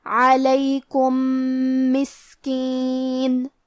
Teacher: کلمت مسکین، میم حروف الادغام میں سے ہے لہذا ہم پہلے میم کو دوسرے میم میں ملا کے ایک ہی میم اور تشدید کے ساتھ پڑھیں گے